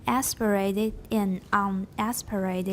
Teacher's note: Can you stress un? Make it high.